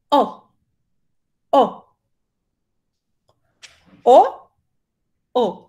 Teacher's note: Esta es una O abierta. Es una O con la boca más de A, ¿cierto? O.